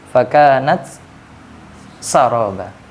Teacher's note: Fakanat saroba itu tidak diidgam, tidak boleh dibaca idgham.